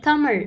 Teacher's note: அந்த லா சொல்லும்போது அந்த நாக்கு பின் பின்னாடி போய் வருடனும் அந்த அன்னத்தை வந்து லாஸ்ட்ல டச் பண்ணனும்